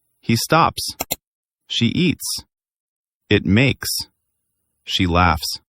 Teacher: Your throat doesn't vibrate for that s sound. It's just air.